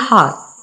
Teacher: रा तो साइलेंट है, वो जो आ है वो लंबा हो जाता है, लॉन्ग हो जाता है